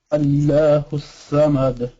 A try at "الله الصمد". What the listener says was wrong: No, you pronounce the lam with the like almost like a thick lam. Allah.